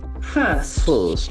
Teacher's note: so this is again another beautiful observation first first the r middle R is silent